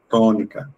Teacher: Sílaba tónica to. Por lo tanto, está en la antepenúltima.